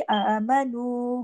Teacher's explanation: वाव मद्दा भी है और ऊपर एक मद और भी है, उसको इसी के मिकदार के मुताबिक आमनु पूरा खींचना है, उसका हक अदा करना है।